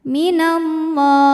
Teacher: Allah mad arid li sukun karena mad tabi'i bertemu huruf yang disukunkan karena waqaf. Mad tabi'inya fathah panjang pada huruf lam, huruf yang disukunkannya ha.